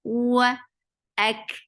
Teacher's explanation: Hamza is very sharp, attached with kaf. Kaf will get sifa of hams, and hams is a flow of breath.